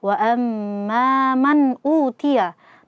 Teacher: Nun sukun ketemu hamzah. Izhar halqi dibaca dengan jelas.